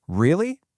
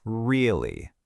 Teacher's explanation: Let's just take one single word, really. If I say it with a rising pitch, really, it becomes a genuine question full of surprise or even disbelief.